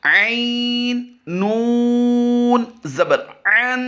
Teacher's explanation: نون مشدد کی وجہ سے غنہ کر رہے ہیں